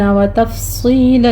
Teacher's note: فا پر بھی ہمس ہوگا، صاد کو پر پڑھتے ہوئے آگے یا مدہ ادا کریں گے